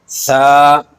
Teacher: ایک الف کے برابر اس کو کھینچ کر پڑھیں گے، اس پر نہ زیادہ جھٹکا دیں گے اور نہ زیادہ کھینچیں گے